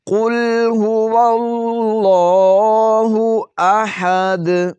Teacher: دال پر وقف کرتے ہوئے قلقلہ کریں گے۔